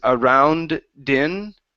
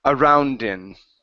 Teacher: the only way that it works is if you only pronounce the D once and you connect the word in to the end of the word around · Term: connection